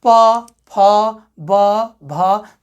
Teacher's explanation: हमारी जो ये ओठ है ये क्या हो रहा है, आपस में चपक रहा है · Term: ओष्ठ